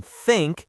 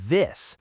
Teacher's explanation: the unvoiced th in think, and the voiced 'the' in this.